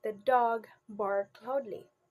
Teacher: the rhythmic shift because the stress is now on bark.